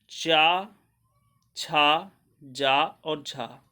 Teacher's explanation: चा, छा, जा और झा के उच्चारण में किसी भी संघर्ष की स्थिति बनती है, अतः इसे स्पर्श संघर्षी व्यंजन कहते हैं।